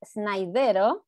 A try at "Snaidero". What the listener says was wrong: It's pronouncing the Spanish way. The French way, Snaidero.